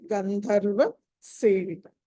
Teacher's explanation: గంధర్వ ధ మళ్ళీ మహాప్రాణమైంది